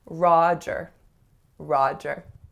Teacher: make sure your ah sounds are really resonant, that they really are a low back vowel that creates some space in the back.